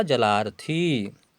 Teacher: अ और अ मिलकर के आ बन गए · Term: दीर्घ